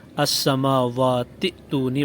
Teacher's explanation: ملانے کی صورت میں حمزہ کو گرا کر السماوات ائتونی پڑھا جائے گا